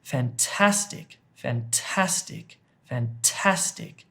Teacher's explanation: You hit the middle of the word with the emphasis, with stress. The word stress is here.